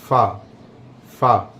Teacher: जो सामने वाले दांत होते हैं, जब वो हमारे होंठ पर लगते हैं, नीचे वाले होंठ पर, तो उससे फ़ा अदा होता है। ऐसे फ़ा फ़ा, अब ये फ़ा अदा हो रहा है।